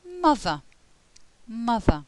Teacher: Is a short sound. The mouth is relatively open. The lips are starting to get a bit more rounded than they are in a. And the tongue is in the centre of the mouth.